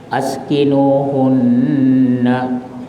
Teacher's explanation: Nun yang bersabdu itu namanya wajibul hunna. Wajib dengung berapa lama? Dua harakat.